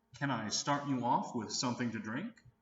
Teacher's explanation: with something to drink notice how the question starts with can since this is a yes/no question the intonation Rises at the end